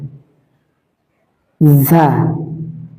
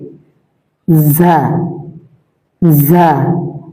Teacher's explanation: জিহ্বার আগা সামনে নিচের দুই দাঁতের পেট ও আগার সঙ্গে লাগিয়ে ঝা। জিহ্বার আগা সামনে নিচের দুই দাঁতের পেট, জিহ্বার আগা সামনে নিচে দুই দাঁতের পেট ও আগার সঙ্গে, একদম আগা না, পেট আগার সাথে মিশিয়ে ঝা ঝা।